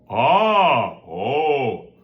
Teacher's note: That little clicking sound at the beginning of our vocalization is the glottal strike, okay? And we want this to be precise, light sounding.